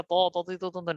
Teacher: জিহ্বার আগা সামনের উপর দুই দাঁতের গোড়ার সাথে লাগছে।